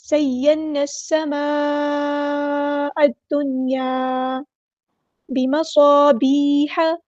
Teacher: صاد میں سیٹی آئے گی. اور یہ اس کو فل ماؤتھ لیٹر ہے، ہمارا ہیوی لیٹر ہے، پورا ادا کرنا ہے.